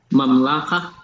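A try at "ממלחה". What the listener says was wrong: And the accent is here at the end.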